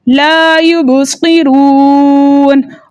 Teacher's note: اس را کو ہم موٹا پڑھیں گے کیونکہ را کے اوپر پیش ہے · واو مدہ کو دو حرکت کی مقدار کھینچ کر پڑھتے ہیں، لیکن آگے نون کا سکون عارض وقف کی صورت میں آ رہا ہے، اس لیے یہاں پہ مد بنے گی مد عارض وقفی، جس کی مقدار 2 4 6 حرکت ہے، لیکن 6 حرکت کی مقدار کھینچ کر پڑھنا زیادہ بہتر ہے